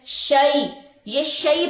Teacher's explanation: یا خالی ما قبل زبر، اسے کہتے ہیں یا لین، اور یا لین کو 1.5 سیکنڈ لمبا کرتے ہیں. شئی، یہ شئی پڑھا جائے گا، شین زبر یا شئی.